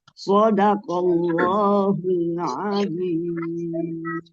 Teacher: Itu soknya jangan terlalu panjang.